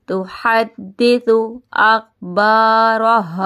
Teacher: اب دال پہ جماؤ کریں گے، تشدید کے ساتھ ہے دال